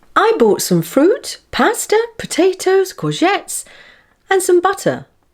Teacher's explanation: This is where the intonation rises on each item of the list until the final one when the intonation falls. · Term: listing